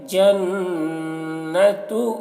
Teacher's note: نون مشدد ہے تو غنہ کریں گے